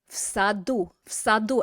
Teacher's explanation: notice I'm pronouncing that v as an f because s is voiceless. Okay, so your vocal cords do not vibrate when you say s.